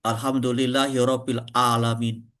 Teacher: juga kadang ain menjadi hamzah kalau cepat-cepat